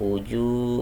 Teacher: Hukumnya adalah mad tabi'i, dibaca panjang dua harokat atau satu alif. Wujuh bacanya seperti itu.